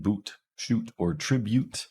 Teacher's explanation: they make the uh sound uhuh we have ooh this is our high back rounded tense vowel